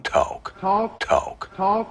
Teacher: johnson had a very bunched up back of his tongue